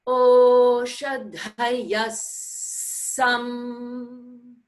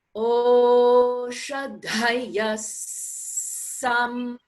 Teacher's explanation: Technically, we land on the first s and we jump off the second s. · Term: double sa